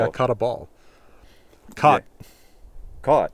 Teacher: i don't even say it as rounded as i could because this rounded vowel is barely in my dialect of english